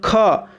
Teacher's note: जैसे आप बोलो ना ख, देख रहे हो अधिक हवा निकल रहा है आपके मुंह से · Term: महाप्राण